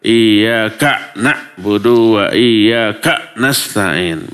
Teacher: k-nya di berhenti seolah-olah ada hamzah yang di sukun